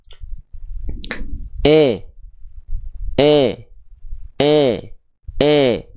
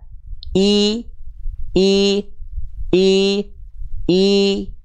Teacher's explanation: e tapi kalau tengah lidah kita angkat i i i i Tengah lidahnya jelas naik keluar vokal I jelas